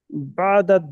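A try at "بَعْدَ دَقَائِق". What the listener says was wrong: বা'দাত না, বা'দা, আলিফ লাম হবে না, দাকাইক।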